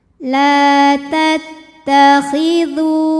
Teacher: Cara membacanya dipanjangkan lamnya dua harokat saja. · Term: mad tabi'i zahiri